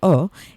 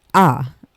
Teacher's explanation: you need to compress your lips a little bit versus when you use the patach vowel, the sound for the patach is ah. So the lips open, and they do this on their own. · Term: kametz